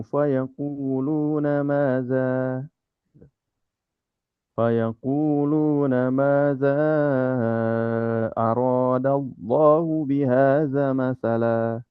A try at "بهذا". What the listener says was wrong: Bihaza masalah. haza. Tadi zanya kok terbaca pendek, Pak. Haza masalah.